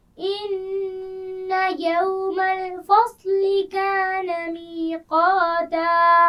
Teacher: فصلی صاد موٹا ہے تو اس کو موٹا پڑا جائے گا، لیکن یہ خیال رکھیے کہ فا اور لام کی آواز کو موٹا نہیں ہونا چاہیے.